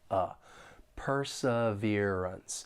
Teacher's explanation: >> For pronunciation, this word has four syllables, and the stress is on that third syllable, perseverance. And the second and fourth syllable have that unstressed schwa sound · the 2nd and 4th syllable have that unstressed schwa sound, sounds like perseverance.